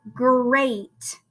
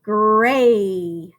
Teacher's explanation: instead of saying great it would be gray right you would leave the final sound off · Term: ending sounds